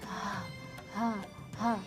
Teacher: sifat hams, yaitu nafasnya terembus atau nafasnya tidak ditahan.